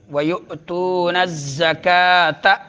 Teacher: یقیمون الصلاۃ، یقی مدہ، منہ مدہ، نصلاۃ صاد میں سیٹی نکالنی ہے، پر سیٹی، نصلاۃ، وَيُؤْتُونَ الزَّكَاةَ، یؤتون میں جھٹکا دینا ہے، تون میں مدہ، نَزَّكَاةَ زا میں سیٹی نکالنی ہے